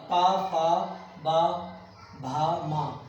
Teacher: फिर आता है पावर पा फा बा भा मा, ये कहाँ से बोले जाते हैं, इस पावर का उच्चारण स्थान क्या है, ओष्ठ से यानी होठों से, दोनों होठों से मिला करके ये पावर्ग हम बोलते हैं